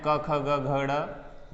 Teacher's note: अ, कु और विसर्जन्यानाम यानी कि विसर्ग, इन तीनों का उच्चारण स्थान है वो कंठ है। अ की ध्वनि कंठ से निकल रही है।